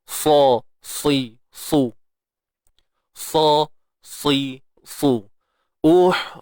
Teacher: itbaq ni terangkat sebahagian besar lidah kita daripada pangkal sampailah ke depan